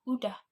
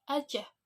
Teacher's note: Saat pengucapan huruf S tidak ikut terbaca, pelesapan bunyi S pada awal kata pada dasarnya untuk memudahkan alat-alat artikulasi dan merupakan ciri keinformalan pemakaiannya